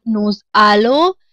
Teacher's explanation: With nu, it is alo, and it together pronounced as nous alo. That is when s plus a vowel meets the sound produced is z.